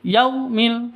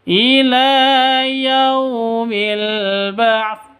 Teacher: Yau itu sifat lin lentur lemas tidak boleh disentak tidak boleh didengungkan, tidak boleh dipanjangkan. Yaumi salah.